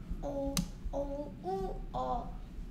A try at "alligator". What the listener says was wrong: O, O, A, O. 오우 소리 모르네요. 오우가 아닌데 가의 소리? 오오아어 중에서? 어. 알은? 얼. 합쳐서? 엘리게이터. 요 가의 소리? 엘리. 엘리게이터.